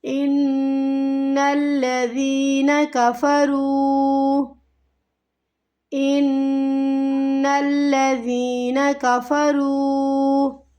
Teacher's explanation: را واو پیش رو حروف مد میں سے ہے تو اسے ہمیں کھینچنا ہے ایک الف کی مقدار کے برابر